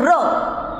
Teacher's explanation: र म्हणताना जिभेला थोडासा असा कंप होतो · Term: कंपित स्वन